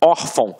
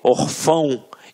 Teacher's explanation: reparem que a sílaba tônica está na penúltima sílaba. Por isso é uma paroxítona.